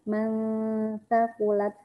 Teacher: Kan kayak sa, sa. Sa kan keluar sedikit ya lidahnya